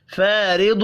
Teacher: فارض، یہ بھی الف مدہ ہے، ایک الف کے برابر کھینچ کر پڑھیں گے، اور را کو زیر کی وجہ سے باریک پڑھنا ہے۔ ضاد حروف مستعلیہ ہے، پر پڑھا جائے گا، غنہ بھی ہوگا۔